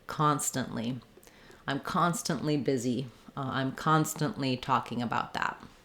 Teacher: it kind of sounds like constant with a really short n dropping off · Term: unreleased T